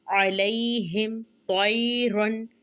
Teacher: तो को मोटा पढ़ेंगे और यालीन का कायदा है